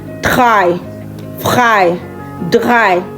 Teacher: German R is pronounced with the back of your throat.